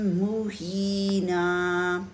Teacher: زبر کی تنوین پہ وقف کیا ہے، اس لیے نون کے ساتھ ہم نے ایک الف پڑھا ہے